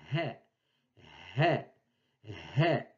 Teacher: C'est le H aspiré de l'anglais